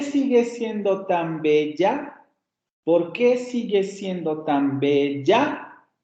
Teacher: aquí el acento el último acento recae en la ve y luego va a ver una curva ascendente en la tonicidad para marcar la pregunta